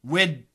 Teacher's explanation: the D and the TH are similar sounds. So we should combine those sounds.